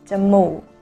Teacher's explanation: Both low tone, jà-mùuk,